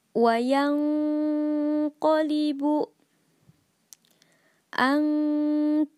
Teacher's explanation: ikhfa dengan tingkatan paling rendah, yang mana bacaan ikhfa-nya lebih pendek dari gunnahnya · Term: ikhfa adna